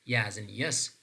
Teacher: This is voiced, means that when we are producing aid, so we perceive more vibration, and then that is palatal in terms of place of articulation. So the tongue is touching our hard palate, and then that is approximant. Approximant means that the tongue is not absolutely touching the hard palate, but they are approximating each other. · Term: palatal sound